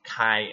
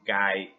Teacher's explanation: Kind of like kai and gai in Thai. Aspirated and unaspirated K.